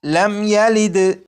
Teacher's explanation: میم ساکن ہے، میم ساکن کے بعد یہاں پر یا ہے، جب میم ساکن کے بعد یا ہے تو اس میم ساکن میں بھی غنہ نہیں کریں گے